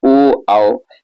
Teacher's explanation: उसी तरह देखिए कंठोष्ठ कह रहे हैं कंठ द्वारा जीभ और ओठों के कुछ स्पर्श से बोले जाने वाले वर्ण